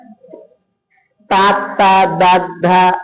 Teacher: నాలుక పల్లని తాకుతుంది కాబట్టి దంత్యాలు